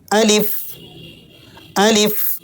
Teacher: الف بغیر دباؤ، بغیر جھٹکا دیے، اسی طرح بغیر کھینچے، سیدھا پڑھیں